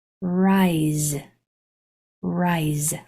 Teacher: The voiceless sound is just S, that's its most common, but sometimes it will make a vibrating sound which sounds like a Z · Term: Z sound